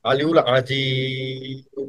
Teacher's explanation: আইনটা কিন্তু গলার মাঝখান থেকে উচ্চারণ করতে হবে